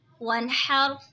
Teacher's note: دیکھیں نون ساکن ہے، نون ساکن کے بعد حروف ہلکی کا ہا آ رہا ہے تو اظہار ہوگا یعنی گناہ نہیں کریں گے. را ساکن سے پہلے زبر ہے تو را ساکن کو موٹا پڑھیں گے